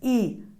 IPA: iː